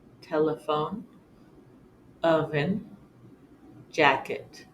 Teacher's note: makes the uh sound as in telephone oven jacket anytime the syllable is not accented